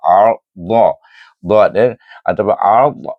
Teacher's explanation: Ar dha atau ar, iaitu lidah kita berakhir dengan meninggikan pangkal lidah, meletakkan tepi lidah ke geraham atas, baru boleh sebut huruf dha, dan dia berbaris alif, buka saja mulut. · Hamzah alif bertemu dengan ra yang sukun ar dengan tebal, kerana sebelum ra bersukun itu terdapat huruf berbaris alif atau berbaris waw, hendaklah baca dengan tebal. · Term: huruf dad